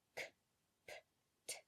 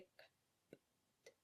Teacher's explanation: whereas English has aspirated plosives, meaning where a lot of air comes through, Italian's consonants are unaspirated, meaning where we would say k, p, t, Italian speakers will say k, p, t.